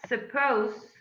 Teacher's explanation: suppose, which ends in a diphthong, first of all, followed by a voiceless fricative sound